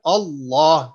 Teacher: تو یہ ایگزامپل یہاں یہ دی گئی ہے کہ لوگ جو ہیں اس کو سافٹ پڑھ دیتے ہیں اللہ, حالانکہ یہ اللہ نہیں ہے اللہ. لام کو 2 دفعہ ادا کرنا ہے بیکاز تشدید آ گئی